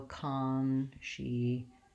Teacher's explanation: My N is long and has the clear vowel, although I have secondary stress on that first syllable. So I still have a clear vowel on con. It's just not as long as it is in conscience.